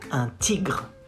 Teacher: Gr, gr, comes from the throat again and again.